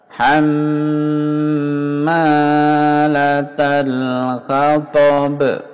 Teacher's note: Hamma mendengung dua harakat.